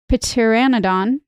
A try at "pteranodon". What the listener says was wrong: No, the P is silent, like pterodactyl.